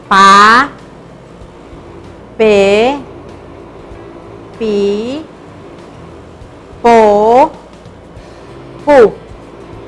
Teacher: se articula con la unión de los labios y se escucha únicamente hasta que se une con una vocal